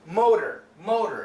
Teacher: the flap T sound sounds like an American D motor motor it sounds basically like m o d e r